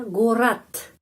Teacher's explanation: Kalau huruf D di belakang kata bunyinya seperti T, ya, gorat.